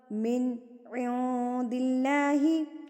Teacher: اللہ سے پہلے اگر زیر ہو تو اللہ باریک پڑھا جاتا ہے، دِلّہ نہیں کہنا، دِلّہ غلط ہو جائے گا، دِلّہ۔